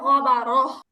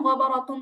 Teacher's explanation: যে শব্দে গোলতা আছে, আপনি যদি ওই শব্দে থেমে যান তাহলে গোলতার উচ্চারণটা হা হয়ে যায়। আর যদি আপনি না থামেন, নর্মালি মিলায় পড়েন, তখন এটা তাই থাকে।